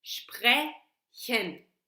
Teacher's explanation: she's pronouncing the voiceless uvular fricative